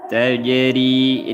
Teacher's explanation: ri dibaca nipis karena berharokat kasrah.